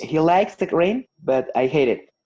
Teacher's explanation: Two people, one person likes something and the other one hates it. So we emphasize on those two verbs to show the contrast